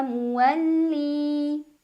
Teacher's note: Wijhatun huwa muwalli, li matobi'i karena ada ya sukun sebelumnya kasrah. Cara membacanya dipanjangkan 2 harokat lamnya. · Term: mad tabi'i